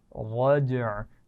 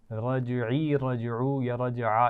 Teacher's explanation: वस्समाइ ज़ातिर रज्अ, والسماء ذات الرجع रज्अ, जीम पर कलकला होगा लेकिन आइन की आवाज़ मखरज पे रुकेगी, ठीक है। रजई, रजऊ या रजआ, इस तरह की आवाज़ नहीं आनी चाहिए।